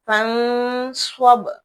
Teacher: با کو ہم جھٹکا لگائیں گے ساکن ہونے کی صورت میں